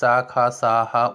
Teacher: इनका उच्चारण होते समय वायु घर्षण करके बाहर निकलती है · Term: ऊष्म व्यंजन